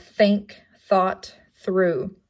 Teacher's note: it's interdental and it's not voiced